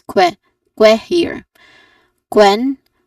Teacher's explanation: the sound of letter Q is the consonant cluster K and W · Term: letter Q sound